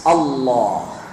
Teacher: ditebalkan lam itu dengan mengangkat punggung lidah ke atas, Allah. Makanya di dalam pengucapannya pun terkandung pengagungan, sehingga pengagungannya itu membawa ke hati. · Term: lamnya mughalladhah